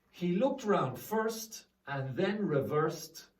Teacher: you can see it's ED, but the sound is T